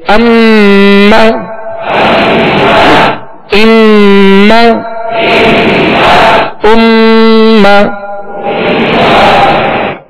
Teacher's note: गुन्ना करने की वजह से इसमें ज्यादा देर लगी